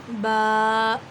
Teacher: با دونوں ہونٹوں کے گیلے حصے سے ادا ہوتا ہے، یعنی جب اپنا منہ ہم آرام سے بند کر آرام سے کھولیں گے تو اس سے با ادا ہوگا۔